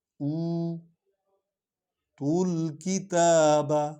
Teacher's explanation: تا کو لمبا کریں گے کیونکہ اس پر کھڑا زبر ہے، اور یہ تے پیش و تو کو لام میں ملائیں گے کیونکہ لام پر جزم ہے.